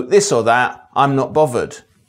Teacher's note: the /ð/ sound coming out as /v/, but only in the middle of words or at the end · TH fronting results in the th sound in other dialects being replaced by a f sound, 30,000 feathers on a thrush's throat, and the th sound coming out as v, but only in the middle of words and at the end.